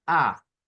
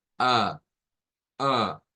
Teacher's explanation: la A es con la lengua hacia el frente, A, y que luego al retrocederla es A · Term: A media